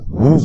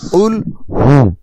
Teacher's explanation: এই হা একটু মোটা করে পড়তে হবে